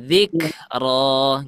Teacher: kalau huruf Kaf itu enggak boleh dipantulin ya